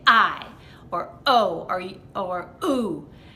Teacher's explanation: You are really slamming your vocal cords together, particularly on words that begin with a vowel. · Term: hard glottal attacks